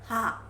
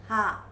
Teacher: Voiceless velar fricative. The sound comes from throat. When you touch the throat here, you're gonna understand ha.